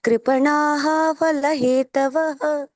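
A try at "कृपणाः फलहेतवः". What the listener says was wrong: ಅಲ್ಲಿ ಕೃಪಣಾಹ ಅನ್ಬೇಡಿ, ಕೃಪಣ ಫಲ ಹೇತವ.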